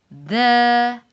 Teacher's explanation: it's articulated from the top of the tongue, from top side of tip and the bottom edge of the two top incisor